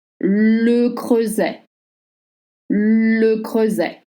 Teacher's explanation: the cluster EU makes the sound like in butter, and you don't pronounce the T.